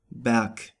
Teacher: at the end of a word it is pronounced like a K. For example, Berg.